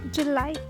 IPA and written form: dʒaɪˈlaɪ (July)